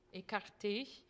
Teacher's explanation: And then when you have a closed E, écarté, let it be really closed, écarté.